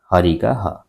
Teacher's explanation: ह का संभार नाद घोष महाप्राण